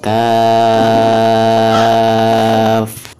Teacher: Bacaan kaf dibaca 6 harokat karena mad berhadapan dengan huruf sukun ya.